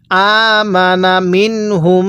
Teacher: নুন সাকিনের পরে এরকম যদি হা দেখেন তাহলে ওই নুন সাকিনটা আপনাকে স্পষ্ট করে পড়তে হবে। কিভাবে পড়ব, আমানা মিনহুম, হ্যাঁ এই যে মিমের পরে এরকম বা থাকলে অর্থাৎ মিম সাকিনের পরে বা থাকলে অবশ্যই ওই মিমটা আমাদের গুন্নাহ করে পড়তে হবে। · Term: ইজহারে হরফ